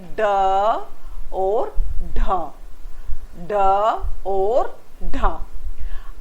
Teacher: जीभ की नोक हमारी तालू से सटकर फिर झटके से नीचे आती है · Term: उत्तिक्षिप्त व्यंजन